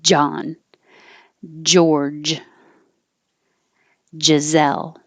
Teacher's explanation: they all stop the airflow so the pressure builds up behind the tongue it's touching in the middle of the mouth you have to